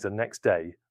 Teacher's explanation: in the phrase the next day, the final t may disappear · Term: Elision